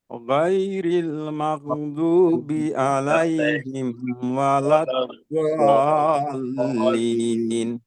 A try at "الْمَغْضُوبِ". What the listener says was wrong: مغضوبی غین پہ قلقلہ ہو گیا.